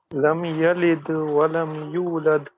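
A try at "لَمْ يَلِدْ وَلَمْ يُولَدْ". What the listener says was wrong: ہاں نہیں یولد نہیں، ولم یولد. ہاں یہ لد کھینچنا نہیں ہے، بس لد ایسے زبر نہ آئے.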